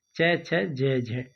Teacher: वे व्यंजन वर्ण जिनके उच्चारण में कुछ घर्षण के साथ वायु बाहर निकलती है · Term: संघर्ष